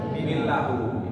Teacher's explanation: Harus bisa bacanya bukan min tapi mil. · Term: idgham